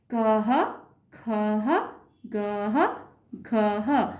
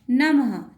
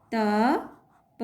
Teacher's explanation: हर व्यंजन के साथ जब आह की विसर्ग लगी तो कह, खह, गह, घह, मतलब आह की आवाज़ भी साथ में आ रही है